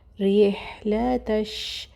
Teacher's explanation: را کو باریک پڑھیں گے کیونکہ زیر ہے، کسرہ ہے